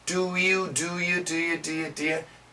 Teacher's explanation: the faster we say it the you gets shorter